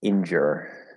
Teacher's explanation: the stress is on the first part